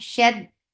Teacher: Shed for fatha, open jaws, attach with dal. Dal will get shifa of shidda. There will be no flow of sound. Shed then, and then there will be gunna, and this gunna is akmal, so keep the sound in your nose for a longer time.